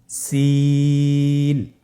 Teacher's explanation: বাকি দুইটি হরফ নাম হল সিন এবংশিন সিন এবংশিন সিন হরফটি উচ্চারণ ক্ষেত্রে অবশ্যই তিন আলিফ টেনে পড়তে হবে সিন হরফটি বারিক হরফ পাতলা করে উচ্চারণ করতে হবে